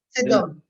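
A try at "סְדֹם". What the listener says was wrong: dire ici, c'est un E furtif, hein, enfin un E muet, on va dire. Donc, on va dire Sodome.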